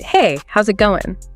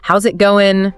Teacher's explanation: The words often run together like, How's it going? Maybe the pitch goes up a bit at the end. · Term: connected speech